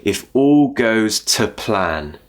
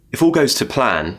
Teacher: all goes to plan the other words are more important so the two gets weakened and we use a schwa